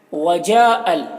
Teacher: جا میں جو مد ہے یہ مد متصل ہے، اسے 3 سے 4 الف کے برابر کھینچ کر پڑھتے ہیں